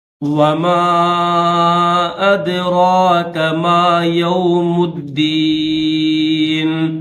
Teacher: میم کے اوپر مد منفصل ہے تو اس کو 3 سے 4 سیکنڈ کھینچیں گے